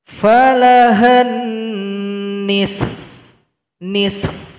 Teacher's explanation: Fa disukunkan, berikan juga bunyi angin atau bunyi vokal dari huruf fa. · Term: berhenti pada huruf fa